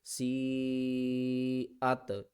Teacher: اس کو ہم کہتے ہیں بڑی مد، اس کو ہم نے 5 الف کی مقدار کھینچ کر پڑھنا ہے۔